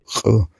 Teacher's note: C'est aussi une consonne éjective, mais uvulaire celle-là